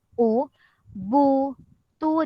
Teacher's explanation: jadi mulut kita nih dia tidak menurun dan tidak terbuka dia ke hadapan dia moncong ke hadapan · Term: baris dhomah, ismam